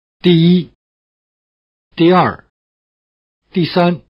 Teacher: The word for number, in the sense of Number 1, is dì, with a falling tone.